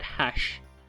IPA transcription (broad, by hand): haɕ